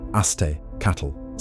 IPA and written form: asˈteːkat͡ɬ (aztēcatl)